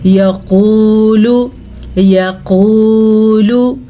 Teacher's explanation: यक़ूलु, यक़ूलु, یا کے اوپر زبر ہے تو ہم نے زبر پڑھی، لام پہ پیش ہے تو اس کو بھی ہم نے لمبا نہیں کیا، لیکن درمیان میں واو مدہ ہے، اس کو ہم نے کھینچ کے پڑھا